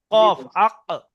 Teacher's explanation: কফ জীবের গোড়াটা উপরের তালুতে লাগছে